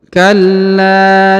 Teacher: huruf la ditahan dan ditekan karena terdapat tanda tasdid ya lalu dipanjangkan dua harakat